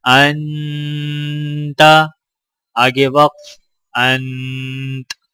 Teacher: تا ہمیں پڑھنا نہیں ہے لیکن تا کی آواز محسوس ہونی چاہیے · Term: سکون کی حالت